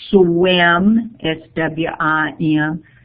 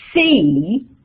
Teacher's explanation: when I say the word swim I'm already rounding my lips because the next boning is a lip rounded W but when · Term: lip rounding